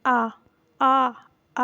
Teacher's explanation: आ स्वर जो है वह अर्ध विवृत स्वर है